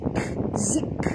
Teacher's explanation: bunyikan hamas pada huruf kaf yang mati. Jangan lantun, jangan jadi qalqalah pula ya. Jangan jadikan dia zik, bukan zika, tapi bunyi dia zik.